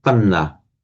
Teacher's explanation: By internal sandhi, the d and the n merge to panna.